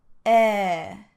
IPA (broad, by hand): e